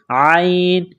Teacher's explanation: میثاقکم ورفعنا، ورفعنا، را کے اوپر زبر ہے، را کو موٹا کرنا ہے، فا کو عین کے ساتھ ملانا ہے، عین گلے کے درمیان سے زور لگا کر عین کو نکالیں گے